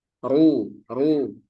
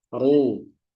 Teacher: Kemudian kondisi rok dibaca tebal yang keempat berharokat dom. Ru, ru, ini juga tebal.